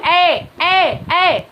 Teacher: लेकिन बोल के देखो तुम ए, तो तालु भी टच हो रहा है ना, तो इसीलिए कंठ और तालु इन दोनों को मिला करके हम ए और ए का यूज करते हैं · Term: कंठ तालव्य